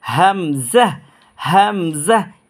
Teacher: এই দুইটা হরফ গলার শুরু হইতে উচ্চারণ করবেন